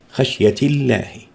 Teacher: لام لفظ الجلالة بعد الكسر دائما مرققة